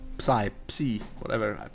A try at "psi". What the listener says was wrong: Psi is without the P. The P is silent. The P is silent. The P is silent.